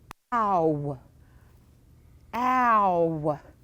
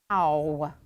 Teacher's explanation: my lips move they start kind of open and they move to rounded position